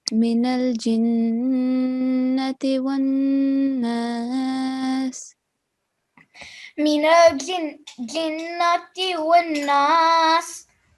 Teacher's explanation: So we have to be mindful of the Ghunna sound, okay, nasal sound. And we have to hold the nasal sound for 2 seconds